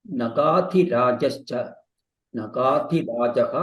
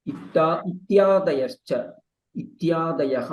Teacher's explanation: If there is a cha ahead, it becomes sh, or otherwise you will hear the sa. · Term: sakara